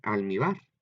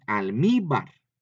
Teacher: en la penúltima sílaba es donde lleva el acento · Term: grave